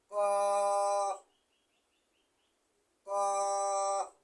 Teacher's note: জিহ্বার গোড়া তার বরাবর উপরের তালের সঙ্গে লাগাইয়া 4 নম্বর মাখরাজ উচ্চারিত হয়। 2 নক্তাওয়ালা কফ হরফ 4 নম্বর মাখরাজ।